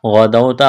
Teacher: واو ساکن سے پہلے زبر ہے، واولین ہے، اس کو کھینچنا نہیں ہے